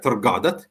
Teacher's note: you see that it is on the second syllable and the first syllable is a schwa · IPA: /tər'gadat/